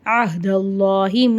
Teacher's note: அல்லான்ற வார்த்தைக்கு முன்னாடி ஜபர் வருது. அல்லான்ற வார்த்தையை வல்லினமாக ஓதணும்.